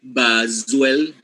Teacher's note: Z is not a stop sound it's a fricative sound